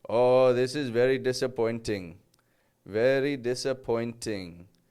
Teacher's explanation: I think he just pronounced some of his T's a little bit too hard